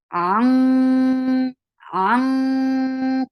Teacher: So there should be a heavy ikhfa. You will lift your root of your tongue towards your palate to make this ikhfa heavy, and the makhraj will be completely blocked because qaf is a heavy letter.